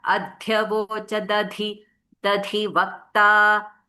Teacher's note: when da and dha come, correct place you should do the Mahaprana